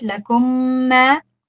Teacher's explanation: لكم ما, make sure that you extend on the meme tashdid there, right? لكم ما, there's two memes merging and there's a meme tashdid, so definitely extend there. And then after the meme, there's an alif.